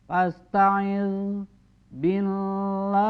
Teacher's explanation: Ini suara lam jalalah. Ketika huruf sebelumnya dikasrah, maka lafaz Allah di sini dibacanya tipis, ya, tidak tepat, atau tidak tebal, atau tidak mufahham.